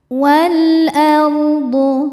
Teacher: ra sukun dibaca secara tafkhim karena sebelumnya harokatnya fathah. Cara bacanya, ra dibaca tebal.